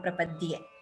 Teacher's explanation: Dye here is not a Mahaprana.